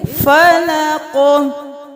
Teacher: فلق، فلق نہیں کریں گے، قاف کی آواز کو ہلائیں گے اور قاف کو موٹا بھی پڑھیں گے، موٹے حروف میں سے بھی ہے اور حروف قلقلہ بھی ہے۔